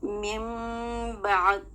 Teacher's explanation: اب ہم اس نون ساکن کو میم کی آواز سے بدل کر پڑھ رہے ہیں اور 2 سیکنڈ کا غنہ کر رہے ہیں. باریک غنہ کرنا ہے یہاں پر.